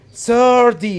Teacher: I will pronounce it as flap T, which is 30. I'll change T into D. 30. So you have to stress the first syllable, which is 30.